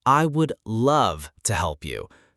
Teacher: Advanced learners focus on correct sounds, stress, and intonation. For instance, I would love to help you. Notice the stress on love.